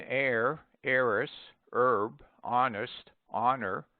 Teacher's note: omit the H in air heiress herb honest honor